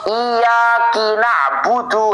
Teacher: contoh perubahan yang sampai merubah makna juga adalah mengkasroh kafnya lafaz iyaka.